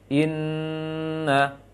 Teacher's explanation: langsung masuk ke tasydid, jangan dipanjangkan huruf sebelumnya.